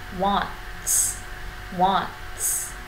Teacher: Âm t đằng sau nó là một âm phụ âm là âm s, thế nên là mình sẽ chặn nó đi và chúng ta đọc là wants.